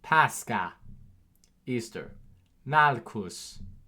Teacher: CH makes a German K sound, a K sound. And this is within Latin loanwords